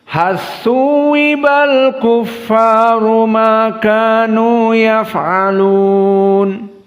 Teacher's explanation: Di sini lam as-sakinah bertemu dengan tha dalam keadaan idgham.